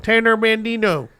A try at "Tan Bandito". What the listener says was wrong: There's no N in